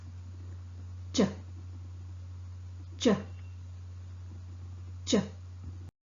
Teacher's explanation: cha sound is articulated with the tongue tip touching the back of the teeth ridge here the vocal cord does not vibrate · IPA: /t∫/